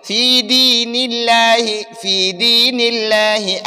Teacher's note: دین اللہ میں لفظ اللہ سے پہلے زیر ہے تو ہم لفظ اللہ کو باریک پڑھیں گے